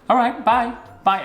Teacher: British people have rising intonation when they say bye on the phone. So it's a bouncy bye.